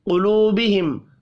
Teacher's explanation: قوف کو پر پڑھیں گے، واو مدہ ایک الف کے برابر کھینچ کر پڑھا جائے گا، میم مشدد پر غنہ کرنا ہے۔